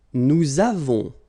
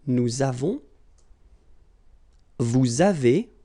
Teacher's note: Nous avons, so you can put this little liaison, link between the two.